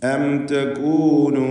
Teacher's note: സുക്കൂൻ എവിടെ എഴുതപ്പെട്ടതായി കാണുന്നുവോ അതിൻ്റെ അർത്ഥം ആ അക്ഷരത്തെ ക്ലിയറായി വ്യക്തമാക്കി ഉച്ചരിക്കണം എന്നതാണ്. ഇവിടെ അം തകൂനു സാക്കിനത മീമിന് ഇൽഹാർ ഷഫവി നൽകി മണിക്കാതെ വെളിവാക്കി ഉച്ചരിക്കേണ്ടതാണ്. അം തകൂനു അവിടെ മണിക്കാൻ പാടില്ല, എന്ന് മണിച്ചു പോകരുത്, മറിച്ച് അം തകൂനു മിനല്ലദീന ലാ യഹ്തദൂൻ.